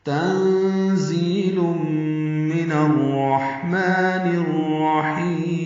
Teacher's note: تنزیل میں تا باریک، نون ساکن پہ اخفا، ان کی آواز چھپائیں گے زا کی وجہ سے. زا کو تیز صفیر کی آواز سے ادا کریں گے